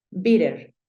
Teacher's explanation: es usual que cuando tú ves palabras que tengan doble t es usual que esa t esa doble t se convierta en un sonido de r en una r